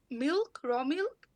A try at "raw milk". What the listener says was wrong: Raw milk, perfect, great.